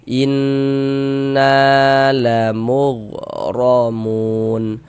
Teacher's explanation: na dibaca panjang, mad tabi'i panjang 2 harokat